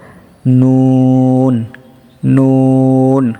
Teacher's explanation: জিহ্বার আগা তার বরাবর তালুর সঙ্গে লাগিয়ে নুন